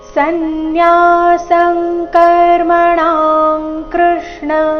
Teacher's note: ಎರಡು ಶಬ್ದದ ಕೊನೆಗೆ ಅನುಸ್ವಾರ ಬಂದಿದೆ ಅದರ ಉಚ್ಚಾರಣೆ ಕ ವರ್ಗದ ಅನುನಾಸಿಕ ಗ ರೀತಿ ಬರಬೇಕು ಯಾಕಂದ್ರೆ ಮುಂದಿನ ಶಬ್ದ ಕ ದಿಂದಾನೆ ಶುರುವಾಗ್ತಾ ಇದೆ ಸನ್ಯಾಸಂ